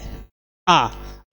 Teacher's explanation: आ बोलने में आपका मुंह जो है पूरा खुलता है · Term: विवृत